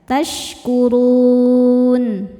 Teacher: Huruf ro sukun dibaca secara tafkhim karena berharakat di atas yaitu harakat dhammah. Cara bacanya ditebalkan. · Maka rnya panjang boleh dua atau empat atau enam harakat. Asal konsisten dalam sekali baca. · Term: mad arid lukun